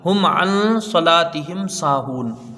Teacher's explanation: میم کو ظاہر کر کے بغیر غنہ کے جلدی پڑھیں گے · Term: اظہار شفوی